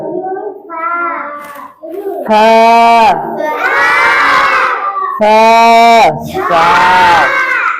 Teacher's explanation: এই হরফটি উচ্চারণ হবে জিহ্বার আগা উপরে 2 দাঁতের আগার সাথে লাগিয়ে। জিহ্বার আগা উপরে 2 দাঁতের আগার সাথে লাগিয়ে একালিফ পড়তে হবে।